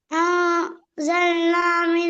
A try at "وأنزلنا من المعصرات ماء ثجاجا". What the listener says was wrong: அன்சல்னா start ஆகல வா வரணும். وأنزلنا பில ஓடையில அது. ராகம் எடுத்து வரணும். இல்ல இல்ல அன்சல்லாண்டு ஆரம்பிக்கிறது பில. அன்சல்னாண்டு ஆரம்பிக்கிறது பில. முன்னுக்கால வா வைக்குது.